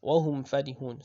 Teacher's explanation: the waw and fa, they are pronounced from almost the same source as mim. As is the makhraj of waw and fa, they are very close.